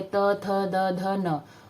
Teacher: दंत में जीभ आपकी दंत पे जाती है, त, थ, द, ध, न।